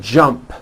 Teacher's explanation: the final sound in Jump is a p which is unvoiced